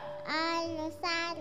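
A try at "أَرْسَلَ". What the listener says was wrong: Arsala. Ya, ro, bilang ro. Arsala.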